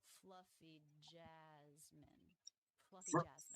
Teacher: these are two syllable words with stress on the first syllable